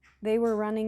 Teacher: So the emphasis is on the main verb that's doing the action, running.